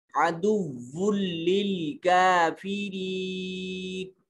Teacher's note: واو کی تنوین کو لام سے ملا رہے ہیں تو نون کی آواز نہیں آئے گی. کافرین میں کاف کے اوپر الف المدیہ الصغیرہ اور یا ساکن ما قبل مکسور یائے مدہ ہے.